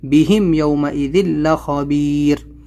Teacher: میم ساکن کے بعد میں یا ہے تو یہاں پر ہم کو اظہار شفوی جلدی پڑھنا ہے